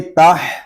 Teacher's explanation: میم نون زیر من، یہاں ہم اخفا والا غنہ کب کریں گے جب ہم تا کو پڑھیں گے، تا ہا زبر تح، من تح، ہا حلق کے درمیان والے حصے سے ادا ہوگا